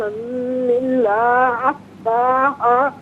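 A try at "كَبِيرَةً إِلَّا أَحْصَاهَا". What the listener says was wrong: اچھا، کبیر وطن میں تا پر دو زبر کی تنوین تو ہے، اس کے بعد حرف علقی حمزہ ہے، تو یہاں غنہ نہیں کریں، کبیر وطن نہیں، کبیر وطن الا، اس کو بھی تھوڑا کھینچ کے پڑھیں گے، ٹھیک ہے۔ جزاک اللہ خیر۔ ناظرین و سامعین، اس کے ساتھ ہی ہمارے اس پروگرام کا وقت اپنے اختتام کو پہنچا۔ یہ پروگرام جسے آپ روزانہ علاوہ ہفتے اور اتوار کے سپہر 4 بجے سے لائیو اور پاکستانی وقت کے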